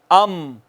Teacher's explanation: دونوں ہونٹوں کا باہر والا خشک حصہ ملا ہے تو میم ادا ہوئی ہے